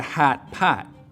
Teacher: the lot vowel, which normally lives back here, your tongue cupping low down in the back for an open ah sound, moves forwards towards where trap used to be. So in Chicago, it's not a hot pot, it's a hat pat.